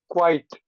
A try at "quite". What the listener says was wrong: Quite. Good. That's really good.